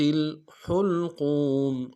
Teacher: ہا کو گہرائی سے ادا کریں گے ، لام کو سامنے لانا ہے، قوف کو موٹا ادا کرتے